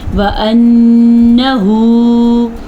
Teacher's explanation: نون کے اوپر شد ہے تو اس کا غنہ ضرور ادا کرنا ہے